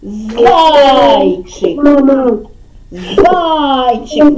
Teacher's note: наголос у нас падає на звук а і склад а